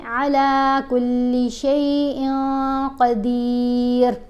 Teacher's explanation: نون کی آواز نہیں آنے دینی کیونکہ قاف حروف احفا میں شامل ہے